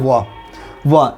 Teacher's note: जब व का उच्चारण करते तो दांत भी आता और ओष्ठ भी आता, तो दांत और ओष्ठ दोनों मिला देंगे तो दंतोष्ठ बना देगा।